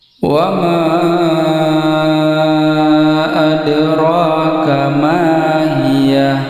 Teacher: tanda panjang bertemu dengan hamzah dalam kata yang terpisah. Ini disebut dengan mad jais mufassirun. Jadi dibaca 4 atau 5 harakat ketika wasal dan 2 harakat ketika wakaf.